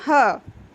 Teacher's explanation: ये कंठ के नीचे एक स्थान होता है जिसे काकल कहते हैं, वहाँ से इसकी ध्वनि निकलती है, इसीलिए इस वर्ण को काकल्य व्यंजन कहते हैं।